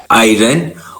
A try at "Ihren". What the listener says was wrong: ERN. It is not I. It is not I. It is E sound. ERN.